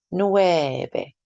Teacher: Try to make that V a nice soft B sound.